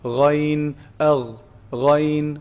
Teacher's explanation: Ghayn is pronounced from the highest part of the throat, the top part of the throat.